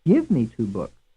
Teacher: of the last four words in this context the word give is pronounced somewhat more loudly than the rest the item give is thus said to be stressed and the